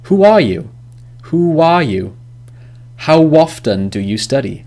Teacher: So there's a wa sound in between these words. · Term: linking w sound